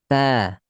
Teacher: Ta terangkat tengah lidah kita tuh.